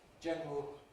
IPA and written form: ˈʤenrəl (general)